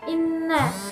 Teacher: Dan di sini juga terdapat bacaan gunnah di inna. Gunnah itu sendiri yaitu nun bertasdid. Cara membacanya dengan dengung.